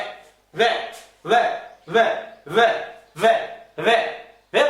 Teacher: नीचे का होंठ ऊपर वाले दांतों को टच कर रहे हैं ना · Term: दंतोष्ठ